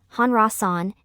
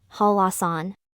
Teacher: In the word Hwallasan, the final consonant, neun, of the first syllable and the initial consonant, ryul, of the second syllable cause euphony. The final consonant, neun, of the first syllable becomes the consonant, ryul, due to the influence of the initial consonant, ryul, of the second syllable. Therefore, instead of reading it as Hanrasan, it should be read as Hwallasan.